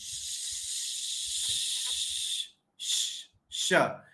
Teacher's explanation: अब च बोलते समय जीभ को थोड़ा सा नीचे रहने दो। टकराओ मत। तो आपकी आवाज आएगी श। · यह जो श का उच्चारण होता है इसमें हमारी जीभ तालु पे रहती है। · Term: श शक्कर का